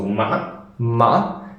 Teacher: And here it's something like it's going up, but there's a crack, and then it goes up again. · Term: cracking tone